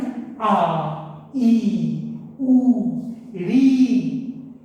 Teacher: इनके उच्चारण में हर स्वर के मुकाबले ज्यादा समय लगा है, एक मात्रा बढ़ जाती है। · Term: दीर्घ स्वर